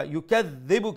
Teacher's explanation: ما اخلم لما يكذبك ذال هذا الشدة double sound and plus make sure you pronounce the ذال with the soft sound make sure it does not resemble the sound of za